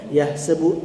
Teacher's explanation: Yahsabu ha tengah halkum